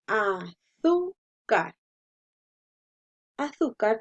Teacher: azúcar lleva tres sílabas y la mayor fuerza la hacemos en la penúltima